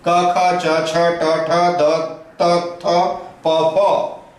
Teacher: इनको बोलने में स्वरतंत्र में कंपन नहीं होता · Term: अघोष